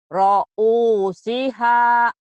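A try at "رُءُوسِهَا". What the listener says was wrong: bukan ro'u tapi ru'u. Ru'usiha.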